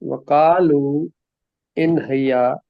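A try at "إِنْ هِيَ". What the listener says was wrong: ہی، حیا نہیں، ہیا ہیا، ہا کے نیچے زیر پڑے نا، ہیا نہیں نہیں، زیر ہے نا جی، ان ہیا۔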